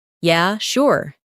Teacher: in a flat tone, it might mean they're not really interested. But if they say, "Yeah, sure." with excitement, it's genuine agreement.